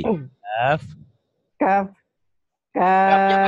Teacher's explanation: Kafnya panjang, 6 harokat, 3 alif.